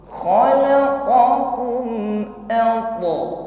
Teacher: Sedangkan huruf ta sukun ini bunyi qalqalah atau pantulannya ini tebal.